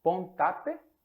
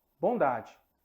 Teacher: uma surda virar uma sonora o t é um som surdo T as cordas vocais elas